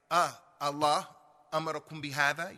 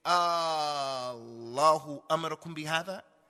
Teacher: You have to make the idgham of those two alifs and bring them together and elongate it